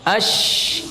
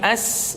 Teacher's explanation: Sifat tafasyi yaitu tersebarnya udara pada seluruh mulut ketika mengucapkan huruf dari makhrajnya. Sifat ini dimiliki oleh oleh huruf shin saja, ya, yaitu ya menyebarnya udara pada rongga mulut, ya.